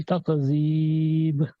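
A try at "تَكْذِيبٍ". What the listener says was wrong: یہاں پر جو کاف ہے نا، اس پر کلکلانا ہو، یہ جنبش نہ، جہاں جنبش نہیں ہونی چاہیے. تقریب نہیں، تقریب. دیکھیں تک کاف ہلانی، اگر کہیں تقریب تو کاف ہل گیا، کلکلا ہو گیا.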